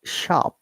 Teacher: there is no R sound because I'm trying to pronounce according to the British IPA. And remember that in British English, we do not pronounce R at all.